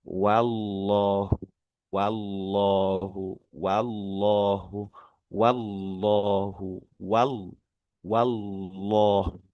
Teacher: Ee boleh kita pelankan dulu, kita ulur dulu supaya dapat ee sifat tipisnya huruf wawu sekaligus nanti setelah tipisnya huruf wau itu diikuti oleh tebalnya jelalah